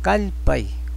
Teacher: Acá la mayor fuerza de voz llevamos en la penúltima sílaba. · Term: acento en la penúltima sílaba